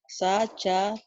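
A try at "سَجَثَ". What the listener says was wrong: Ujung lidah. Ujung sa. Kalau ta titiknya 2. Ini cedal ya. Ujung lidah ke ujung gigi.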